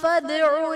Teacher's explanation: دال حرف قلقلہ ساکن ہے تو یہاں پر قلقلہ خوب ظاہر کریں گے · با حرف قلقلہ مشدد ہے تو یہاں پر قلقلہ خوب جماؤ کے ساتھ ادا کریں گے